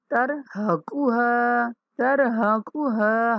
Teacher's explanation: ہا کو کھینچیں گے الف مدہ ہونے کی وجہ سے